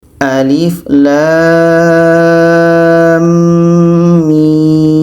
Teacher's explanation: lam dengan mim itu dibaca panjang 6 harakat karena ada tanda Mad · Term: mad lazim Harfi mutsaqqal